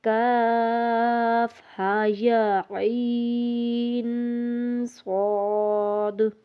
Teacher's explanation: لیکن ایک اور بات کا خیال کرنا ہے کہ عین کو ناک میں نہیں جانا چاہیے، عین الگ تلفظ پڑھ کے پھر ناک میں غنے کو لے کر جانا ہے اور پھر صاد پڑھنا ہے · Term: غنہ